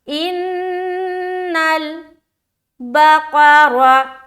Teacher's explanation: इन्नल बकरा, क्या पढ़ेंगे, बा जबर बा, काफ जबर क़ा, काफ को मुंह भर कर बोलना है, मोटे हरूफ में से एक है। रा जबर रा, रा को भी मोटा करके पढ़ना है क्योंकि रा के ऊपर क्या है, रा किस लिए मोटा होगा, क्योंकि रा के ऊपर जबर है।